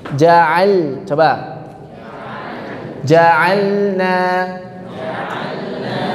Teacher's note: Caranya supaya jelas adalah ditekan, sedikit ditekan huruf lam sukunnya.